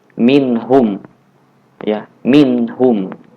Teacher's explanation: Nunnya dibaca jelas. Jangan dibaca samar seperti ikhfa. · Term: izhar